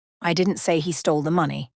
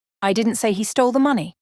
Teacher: in the first sentence I'm emphasizing didn't meaning I didn't say it in the second sentence I'm emphasizing he which means maybe someone else said it the words are exactly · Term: intonation